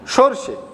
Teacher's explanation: উচ্চারণের সময় আমরা দন্তস্ব এবং মূর্ধন্যস্ব এই দুটো কিন্তু আমরা আলাদা করতে পারছি না